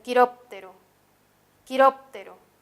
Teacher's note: tiene la mayor fuerza de voz en la anterior a la penúltima o la antepenúltima